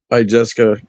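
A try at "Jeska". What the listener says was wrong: It don't have the I in there though. It's Jess and then Ka, not Jessica. Not Jessica. No I. Jess and then Ka. No Jessica. JESS. No I.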